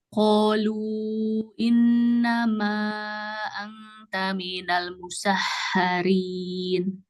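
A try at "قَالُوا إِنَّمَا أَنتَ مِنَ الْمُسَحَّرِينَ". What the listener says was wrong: Kenapa di minal musahharinya dicepatin? Temponya kayak biasa, jangan di minal musahharinya tiba-tiba minal musahharin. Nah, jangan tiba-tiba.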